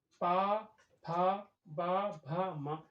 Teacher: जब हम इनका उच्चारण करते हैं तो वो हमारे ओंठ एक दूसरे से टकराते हैं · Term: ओष्ठ्य वर्ण